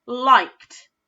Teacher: when we blend it back together, that d becomes like almost a t sound